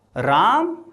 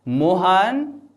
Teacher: यहां पे लास्ट वाले शब्द को थोड़ा सा ज्यादा खींच लेते हैं। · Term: प्लु स्वर